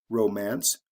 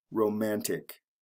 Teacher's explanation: Romance, the first syllable, is emphasized. Romantic, the second syllable, is emphasized. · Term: shift in the stress pattern